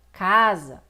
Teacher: O A de cá é muito mais forte do que o A de Zá. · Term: sílaba tônica